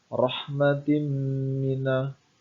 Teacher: Yang pertama, rahmatim mina, bacaan idgham bi gunnah karena ada kasrah tain bertemu dengan huruf mim. Cara membacanya masuk dengan mendengung